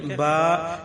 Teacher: با جو ہے یہ ہونٹوں کے اندرونی تر حصہ جو ہے اس سے ادا ہوتا ہے۔ ہمارے جو یہ ہونٹ ہیں اس کا ایک باہر کا خشک حصہ ہے اور اس کا ایک حصہ جو اندر کا تر ہے جو گیلا رہتا ہے وہ ہے۔